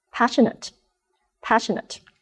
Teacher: the ending of this word spells n a t e Nate and in this word it sounds like net